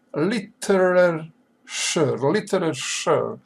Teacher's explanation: literature accent is on the first syllable